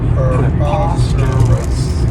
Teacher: remember that O-U-S has that schwa, that us sound. · this adjective has 4 syllables, and the stress is on that second syllable